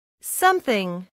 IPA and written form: ˈsʌmθɪŋ (Something)